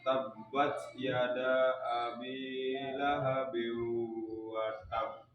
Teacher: Qalqalah kubra ciri-cirinya adalah huruf qalqalahnya di akhir kalimat diwakafkan dan bertasjid. cara baca itu dipantulkan 2 tekanan.